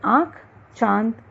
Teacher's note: अनुनासिक, इसका उच्चारण नाक तथा मुंह से होता है।